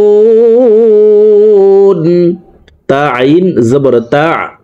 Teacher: আইন হরফকে হলকের মধ্যখান থেকে উচ্চারণ করব, কারণ আইনের মাখরাজ হলকের মধ্যখান থেকে হবে।